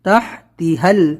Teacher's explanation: ایک بڑا ہا ہے تح، پھر تیہل چھوٹا ہا ہے